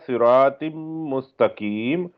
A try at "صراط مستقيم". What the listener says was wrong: ماشاءاللہ اچھا پڑھا، را کو ذرا موٹا کر لیں۔